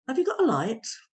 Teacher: you can see the stresses on light and then you have a little flick at the end because it's a yes no question